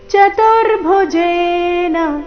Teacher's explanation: ತೇನೈವ [ಸಂಗೀತ] ರೂಪೇಣ ಚತುರ್ಭುಜೇನ ಈ ಶಬ್ದ ದಲ್ಲಿ ಚತುರ್ಭುಜೆ ಈ ರೀತಿ ಮಾಡಬಾರದು ತು ದೀರ್ಘ ಮಾಡಬಾರದು ಗಮನಿಸಿ ಈ ಶಬ್ದದಲ್ಲಿ ಚತುರ್ಭುಜೇನ ದಲ್ಲಿ ಜೆ ದೀರ್ಘ